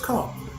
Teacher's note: this r at the end is optional